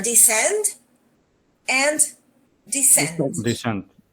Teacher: The stress is on the second syllable everywhere.